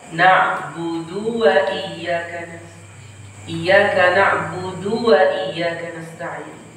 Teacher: memanjangkan harokat dhammah pada huruf dal